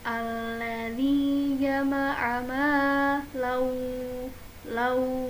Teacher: Maka la fathah tain dileburkan atau langsung dibaca ke huruf waw. Alladzi jama'a law langsung dibaca huruf wawnya. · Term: gunnah